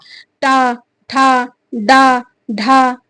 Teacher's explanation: जीभ की नोक मूर्धा में टच करती है तो उनको मूर्धन्य वर्ण कहते हैं।